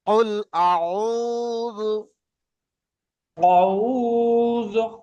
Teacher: আইনের উচ্চারণ গলা থেকে করেন।